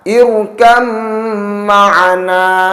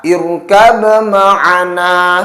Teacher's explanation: Huruf ba sukun diidghamkan pada huruf mim, dan pada huruf mim tersebut berlaku bacaan gunnah atau harus didengungkan. Sehingga sekali lagi cara membacanya irkam ma'ana, bukan dibaca irkab ma'ana.